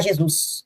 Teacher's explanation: metaplasmo que é um fenômeno metaplasmo transposição ouve uma diast eh o acento tônico né ele se desloca para a sílaba posterior